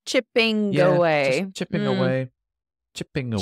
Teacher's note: Again, the G on the last G on chipping disappears